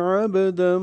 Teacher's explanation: عابدن میں با ساکن پہ قلقلہ ہے